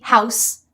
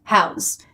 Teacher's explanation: Noun with an S, verb with a Z, house, house.